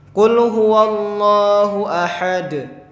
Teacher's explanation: Ahad itu memantul. Karena termasuk huruf qalqalah.